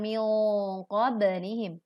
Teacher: Dengungkan dengan suara yang tebal karena nun sukun bertemu qaf.